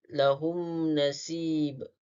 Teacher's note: Kemudian lahum nasib, di mana mim bertemu nun, hukum tajwidnya adalah izhar syafawi dan cara bacaannya adalah dibaca dengan jelas tanpa dengung.